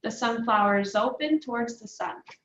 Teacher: The consonant in sunflowers is going to get connected to the O and open. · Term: connected speech